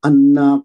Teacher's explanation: انا پہ نون مشدد ہے، نون پہ تشدید ہے اور اس کو غنہ کے ساتھ پڑھیں گے